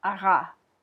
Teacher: if you say ara, your tongue hits in the back of your mouth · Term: French r sound